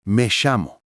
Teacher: en otros lugares, como Argentina o Uruguay, suena como SH